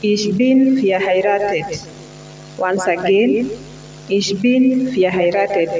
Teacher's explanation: You will note that the V has got an F sound.